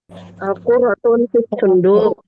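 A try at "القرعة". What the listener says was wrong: Tanpa tanwin ya, Al-Qur'atu.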